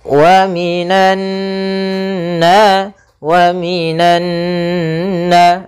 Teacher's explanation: Maka cara membacanya yaitu suara nunnya atau suara an-nya ditahan. Wa minan, sepanjang 2 harokat. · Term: gunnah